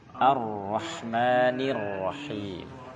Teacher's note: Ar-Rahmanir. Masuknya itu idghamnya cepat, syiddah, tegas karena huruf bertasydid.